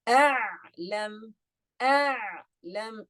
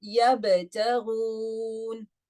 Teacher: Do you see how much time I'm spending on the ayn compared to the ba? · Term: At-tawassut